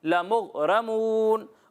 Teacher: غین حروف قلقلہ میں سے نہیں ہے. جب آپ اس کی ادائیگی کریں گے تو آپ کی آواز جو ہے وہ لوٹتی ہوئی محسوس نہیں ہونی چاہیے